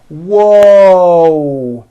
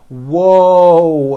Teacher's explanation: whoo right now watch my mouth when I say that whoo there's a w sound at the beginning of that but there's also a hidden W sound at the end